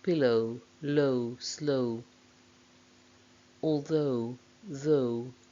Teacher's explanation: the diphthong o starts at the same position of the schwa and then there is a glide towards the closer vowel with some lip rounding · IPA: əʊ